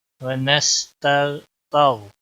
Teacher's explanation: नस्तईनुका व नस्तगफिरुका व नस्तगफिर, गौन पर कलकला नहीं होना चाहिए, गौन को मोटा भी पढ़ना।